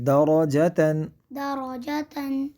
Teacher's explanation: دراج یہاں پہ ہم دراجتن، جی درجتن دراجتن، را کو پر پڑھیں گے، کیونکہ را پر زبر ہے، اور را پر زبر یا پیش ہو تو را کو پر پڑھا جاتا ہے۔